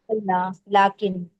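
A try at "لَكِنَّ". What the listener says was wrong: लाकिन्ना, लाकिन नहीं है, लाकिन्ना है सिस्टर, लाकिन्ना, इन्ना जरूरी,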